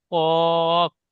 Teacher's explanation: Star চিহ্ন ওয়ালা অক্ষর কফ উচ্চারণ করবার সময় ঠোঁট দুটি গোল আকৃতি হবে, কফ। বলেন।